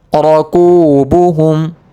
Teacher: را کو موٹا پڑھیں گے زبر کی وجہ سے